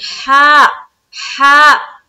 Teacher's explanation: हा, एकदम अंदर से निकालेंगे, हा, हा। जब इस हा को अदा करते हैं ना, तो एक हवा की सी पहले आएगी, उसके बाद हर्फ अदा होता है